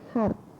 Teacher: Dalam bahasa Belanda, adanya bunyi T pada posisi akhir kata yang dieja hart adalah hasil netralisasi.